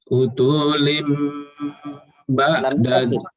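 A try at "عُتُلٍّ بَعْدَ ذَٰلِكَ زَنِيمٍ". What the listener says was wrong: Lamnya ditasydid. Utullim ba'da zalika zanim.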